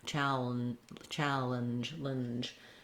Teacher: You basically don't have to make much sound. You can go from the L to the N without too much in between. Then the letters GE say the sound J, which is actually the voiced version of the CH sound. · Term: very reduced vowel